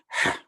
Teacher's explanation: We have the hard H. Ha. When you pronounce it correctly, it comes from the back of the throat also.